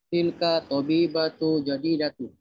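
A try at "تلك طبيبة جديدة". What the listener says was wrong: Yang seperti ini ya, harap diperhatikan, tidak boleh dibiasakan. Membaca nggak ada alif lam, nggak ada tanwin, padahal bukan alis muladi layan sorif.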